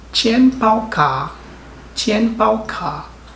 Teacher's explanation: Isang fourth tone at dalawang third tone.